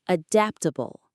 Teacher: The stress is on the second syllable, dapt, adaptable.